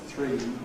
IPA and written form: θrɪi (three)